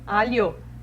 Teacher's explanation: ele pensa no L como se fosse um LI ou LY e depois o O. Então ele fala rapidinho, alho.